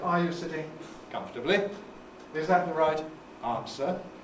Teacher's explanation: british and american english both have exactly the same rising tone on the nucleus